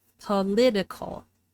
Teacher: So we move the stress from the first syllable to the second syllable in the adjective form. The vowel in the first syllable is unstressed and reduced to a schwa, political.